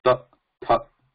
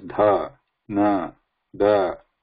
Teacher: In your throat, around your muscles, and in the throat, there is no vibration happening here. Whereas in da, dha, na, there is vibration happening. You can see that vibrating there, like a bell.